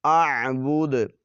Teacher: دال پر قلقلہ کریں گے جب وقف کریں گے